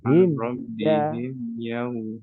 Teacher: memnya itu bukan syiddah, dia tawasud. Maka jangan disentak.